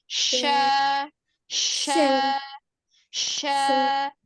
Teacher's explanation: Nah, kalau shin, ya, sekarang shin. Shin itu makhrajnya ada di alisan juga, tetapi ada di tengah lidah. Di tengah lidah yang bertemu dengan langit tengah.